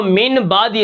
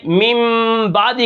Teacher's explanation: اگر نون ساکن نون تنوین کے بعد با آ جاتی ہے تو ہم اس کو من بعدی سے میم بعدی کر کے پڑھتے ہیں، یعنی میم لے آتے ہیں چھوٹا سا۔ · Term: اقلاب